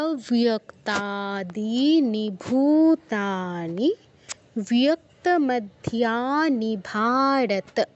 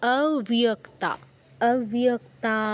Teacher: তাতে দীর্ঘ করতে হবে, দীনি, দিতে দীর্ঘ করতে হবে